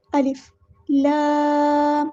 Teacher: الف کو بالکل سمپل ادا کرنا ہے، بغیر جھٹکے کے، بغیر کچھ لمبا کیے، سمپل ادا کرنا ہے۔ الف لام، لام پہ مد لازم ہو رہی ہے تو ہم نے 6 کاؤنٹ لمبا کرنا ہے